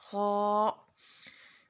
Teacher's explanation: خا منہ کے خالی حصے سے، خا کو موٹا پڑھنا ہے